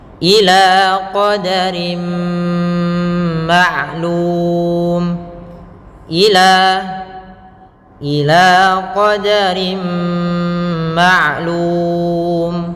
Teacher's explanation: yang tepat adalah kita masuk dan kita tahan suara gunnahnya. Itu suara yang ditahan.